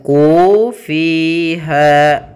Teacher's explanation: Kemudian pada lafal ha ada bacaan mad tabi'i pula, yaitu adanya fathah bertemu dengan alif, panjangnya 2 harokat. Sehingga kita panjangkan ku fiha, semuanya sama 2 harokat